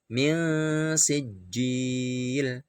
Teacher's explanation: Jadi ikhfa itu artinya samar, tapi dalam prakteknya itu ada dengungnya sedikit. Min sijil, tidak boleh dibaca jelas min sijil, salah.